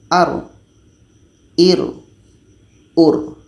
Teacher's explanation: Jadi ketika kita sebut ra ini memang sifatnya akan jahar, jelas.